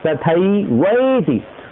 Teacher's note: वैति बोलेंगे तो ती बड़ी हो जाएगी, तो आपको बोलना पड़ेगा तथैवैति।